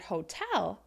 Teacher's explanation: I'm making that second syllable longer louder and higher in pitch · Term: word stress